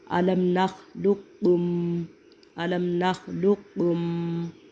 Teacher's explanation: جب پہلا ساکن ہوگا اور دوسرا متحرک ہوگا تو ہم پہلے قاف کا دوسرے قاف میں ادغام کر دیں گے تو اس کاف کے اوپر شد آ جائے گی، تو یہ بن جائے گا علم نخلقکم، علم نخلقکم۔